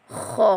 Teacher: kha di hujung kerongkong